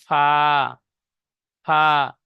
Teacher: নিচের ঠোঁটের ভিজে অংশ এবং সামনের উপরের দুই দাঁতের আগার সাথে লাগিয়ে উচ্চারিত হয় ফা